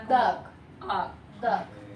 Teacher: esta A no es la normal que pronunciamos, sino que esta A va como hacia atrás.